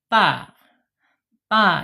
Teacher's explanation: ujung lidahnya menyentuh pangkal gigi seri